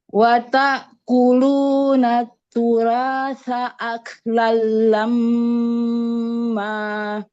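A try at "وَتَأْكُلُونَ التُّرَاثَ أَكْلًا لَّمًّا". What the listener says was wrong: Roknya tebalkan, jangan turah. Wa ta'kuluna turasa aklan lamma. Turasa, ro tebalkan roknya.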